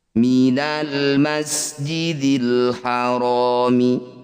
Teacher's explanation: Alif diikuti lam sukun disebut bacaan idhar qamariyah. Bunyi lam sukun baca dengan jelas tanpa diseret ataupun didengungkan